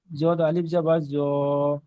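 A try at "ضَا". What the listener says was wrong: ও ভাইজান এগুলো তিন আলিফ টান তিন আলিফ টানগুলো অক্ষরে টানগুলো দেন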